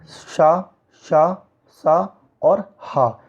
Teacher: ऊष्म व्यंजन होते हैं वे व्यंजन उन्हें कहते हैं जिनमें घर्षण होता है